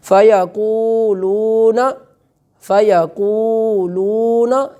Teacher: تو وہ قاف بھی نہیں کھینچا جاتا اور آگے جو لام ہے اس کے آگے جو واو ہے اس کو بھی کھینچ کر ادا نہیں کیا جاتا، تو یہ غلطی ہے، ہمیں اس کی اصلاح کرنی چاہیے.